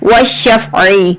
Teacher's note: आइन जो है मिडल थ्रोट से, आइन की आवाज थोड़ी सी रगड़ कर आती है, स्क्वीज होकर निकलती है